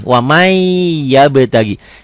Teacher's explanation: Tulisannya waman, bacaannya wamai. N-nya masuk ke Y kalau dilatenkan. · Tulisannya ada bunyi N-nya. Bacaannya N-nya hilang. Melebur tuh. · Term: idgham bigunnah, Idgham bigunnah